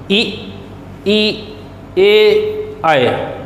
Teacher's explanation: ई ए आए, आगे से उच्चारित हो रहे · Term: अग्र